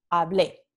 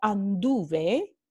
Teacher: el acento prosódico o la sílaba tónica cae en la raíz y no en la terminación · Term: pretéritos fuertes